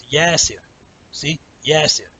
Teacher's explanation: All syllables in Arabic are even, unless there's elongated vowel. The one that has the elongated vowel, that syllable is going to be a little bit longer than the next syllable.